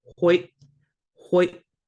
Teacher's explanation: There's no T at the end. That glottal stop that comes right after that Y kind of acts, it kind of sounds like it should be a T, but it's not